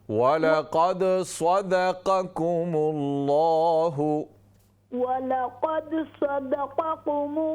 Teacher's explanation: काफ को लंबा न करें, सदक़ा नहीं है, काफ ज़बर क़ा